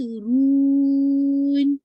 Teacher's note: Nasal sound آپ نے اینڈ میں ایڈ کرنا ہے یہ نہیں کہ رون پہلے سے بس نیزل ساؤنڈ چل رہی ہے نہیں ایسا نہیں کرنا ہے.